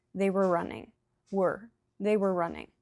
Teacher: Stress the main verb and not the were.